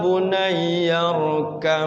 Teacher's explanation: baknya itu seolah-olah kayak mim karena hurufnya satu tempat makhrojnya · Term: idgham mutaqaribain